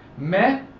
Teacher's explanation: Well, the stress doesn't fall on the last syllable, on the second to last syllable rather. The stress falls on the third to last.